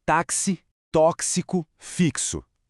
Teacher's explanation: Dá para ouvir aquele som inconfundível de ks? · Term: dífono